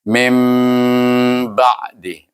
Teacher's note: Iklab ini juga didengungkan dengan 2 harakah. Baru jadi. Kalau kita mim ba je tak jadi.